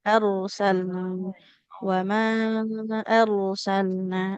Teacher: ro yang sukun didahului fathah juga harusnya tebal ya